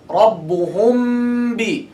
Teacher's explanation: Closing with mim, opening with ba. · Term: ikhfa